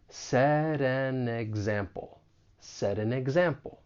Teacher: When the T comes between two vowel sounds, I'm going to pronounce it as a flap T. It's going to sound more like a soft D.